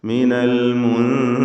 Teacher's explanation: റാഹിന് തർക്കീക്കാണ് കാരണം അതിന് കസർ ആയതുകൊണ്ട്